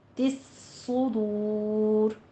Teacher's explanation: بذات الصدور میں ہمارا دال کو نرمی سے ادا کرتے ہوئے الف مدہ، اور تس صدور میں تا کو آپ نے طوا نہیں بنانا، تا باریک رہے گا، صاد کو پر پڑھنا ہے اور صاد کے پر دونوں ہونٹ گول کر لیجئے